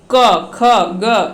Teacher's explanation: हमने बोला कि अ, तो कंठ से वो निकल रहा है, आ तो वो भी कंठ से निकल रहा है, क ख ग ये सभी क्या है कि कंठ से निकलते हैं